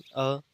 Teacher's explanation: अ स्वर का जो उच्चारण है ये अपने कंठ के अंदर होता